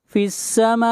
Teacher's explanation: یہاں پر مد متصل ہے، اس مد کو 3 الف کے برابر کھینچ کر پڑھیں گے